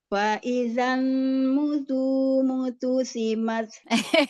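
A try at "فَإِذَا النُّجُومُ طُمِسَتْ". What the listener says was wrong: Kebalik. Tumisat. Faizan nuju. Nujumu tumisat. Fokus hurufnya. Fokus hurufnya, santai. Fokus hurufnya, jangan kebulak-balik. Iya, jadi kelubak-labik gitu ya.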